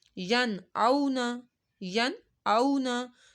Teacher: نون زبر نا، ین او نا، ین اونا، کیونکہ واؤ ساکن سے پہلے زبر آ رہا ہے تو یہاں پہ واؤ لین ہو رہا ہے